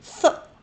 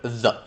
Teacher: A dental fricative is basically th or the. Th is a voiceless dental fricative, and the is a voiced dental fricative.